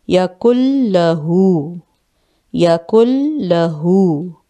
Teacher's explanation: کاف جو ہے ڈائریکٹ لام سے ملے گا، شد ہے، نون اس میں نہیں بولا جائے گا